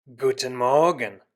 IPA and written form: ˈɡuːtn̩ ˈmɔʁɡn̩ (Guten Morgen)